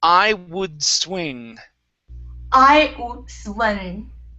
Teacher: produce half the D sound then move to the S